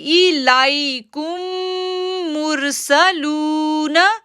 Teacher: لو کو کھینچیں گے 2 سیکنڈ کے لیے کیونکہ واو ساکن سے پہلے پیش ہے